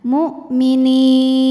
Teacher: Mad tabi'inya ya sukun didahului harokat kasrah, kemudian huruf yang disukunkannya nun. Jadi kalau berhenti nunnya boleh dipanjangkan 2, 4 atau 6 harokat asal konsisten dalam sekali bacaan. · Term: mad arid li sukun